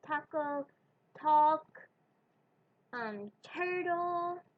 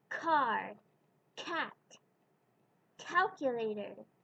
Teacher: You feel the puff of air? This puff of air in linguistics is called an aspiration